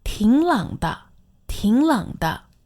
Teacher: this is 2 third tones, but it sounds like a second and a third tone